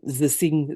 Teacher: for many French speakers, both of these tend to become z.